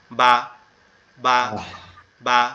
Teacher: উপর এবং নিচের ঠোঁট, এই দুইটা একসাথে লেগে যাবে